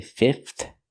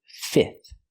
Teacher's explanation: You can pronounce the middle F and say fifth, but you don't have to. You can eliminate the F and just say fifth.